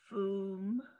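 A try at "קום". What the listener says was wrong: That's a kuf.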